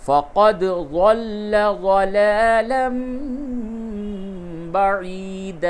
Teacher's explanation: فقد دال میں قلقلہ ہوگا